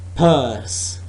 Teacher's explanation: before we produce purse both the lips are together and then wrap at the end both the lips are together